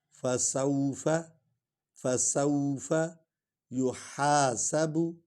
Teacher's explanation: سین جو ہے سیٹی کے بعد نکلے گی، با ہونٹوں سے نکالیں گے. یحاسب، بو بھی نہیں پڑھیں گے، بو بھی نہیں پڑھیں گے.